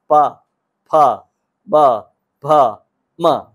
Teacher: प, फ, ब, भ, म ये ओष्ठ है, इसको जब आप बोलेंगे तो होठ का स्पर्श होगा।